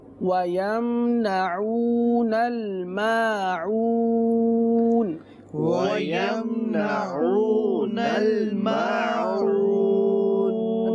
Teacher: اب دونوں جگہ عین ہی ادا کرنا ہے، حمزہ ادا نہیں کرنا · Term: عین کی ادائیگی